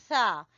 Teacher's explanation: आपने सा, जैसे मैं पहली तख्ती में बता चुकी हूं आपको, सा जबान की नोक को सामने वाले दो दांतों के सिरे से आपने लगाना है तो अदा होगा सा।